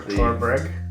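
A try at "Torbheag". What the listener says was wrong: the BH makes a V sound. Torveg.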